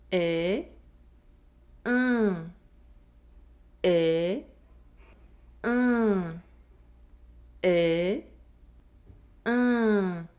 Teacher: Nasal vowel un. The lips are stretched and the mouth is almost closed. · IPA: [ɛ̃]